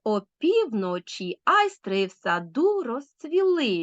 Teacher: трискладова стопа з наголосом на другому середньому складі і теж відчуйте так Опівночі айстри в саду розцвіли відчули вальс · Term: афібрахій